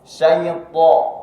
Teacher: Huruf-huruf tebal termasuk itu huruf to itu mengucapkannya tidak dengan memonyongkan bibir.